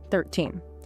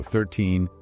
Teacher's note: the suffix teen has a long, stretched out E sound. When you say it, the corners of your mouth should pull back into a wide smile.